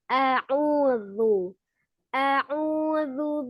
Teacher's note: Di a'udzu itu hurufnya zal. Ujung lidahnya ada di ujung gigi seri bagian atas ya. Ujung lidahnya dikeluarkan sedikit saja.